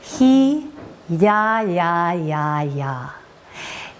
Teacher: The sound E is going to allow for the lateral extension of the lips, and the ya, ya, ya will engage the medial glide or the middle of the tongue